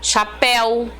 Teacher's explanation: a sílaba mais forte final tá vendo chapéu então tem acento ela não é paroxítona é oxítona última sílaba